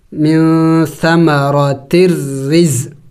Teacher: را کے نیچے زیر ہے اس کو باریک کر کے پڑھیں گے